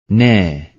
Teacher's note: nun dilin ucuyla üst ön dişlerin etlerinden çıkarılır ince okunur